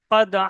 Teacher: হাটা একদম পুরো গলার মধ্যে উচ্চারণ হবে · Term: হার মাখরাজ